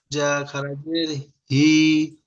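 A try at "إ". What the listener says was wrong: হি নয়, ই। ই, হর্ষই ই।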